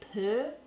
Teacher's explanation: the new zealander will stick their lips out to say purr and the australian the lips won't come out quite as far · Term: er sound